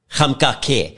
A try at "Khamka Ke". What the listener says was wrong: Actually Ke. It's a click.